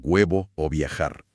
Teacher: Sí, este ocurre por un fenómeno de inercia, cuando la B o la V se encuentran atrapadas entre dos vocales, por ejemplo en la palabra huevo o viajar. El aire ya viene fluyendo por las vocales, así que los labios intentan cerrarse, pero no lo logran por completo. Se acercan apenas lo suficiente para rozar el aire, creando un sonido mucho más continuo y sin esa explosión inicial. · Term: aproximante bilabial